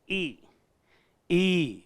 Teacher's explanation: ई और ई का हम उच्चारण करेंगे तो हमारी जो प्राणवायु है वह तालु से टकराएगी। जैसे हमने उच्चारण किया ई, ई, तो जो हमारी प्राणवायु यानी फेफड़ों से निकलने वाली जो प्राणवायु है और नाभि से निकलने वाली जो हमारी ध्वनि है, वह उन दोनों का संगम आकर के हमारे तालु से टकराता है। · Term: तालव्य स्वर